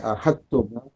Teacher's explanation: Tudgham atau tudghim dal litak. Masukkan dal kepada ta. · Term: Idgham mutajanisain